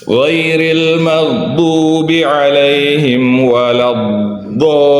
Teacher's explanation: Jadi bukan waladdo, tidak dipotong, tidak. Tapi diseret. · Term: sifat istitalah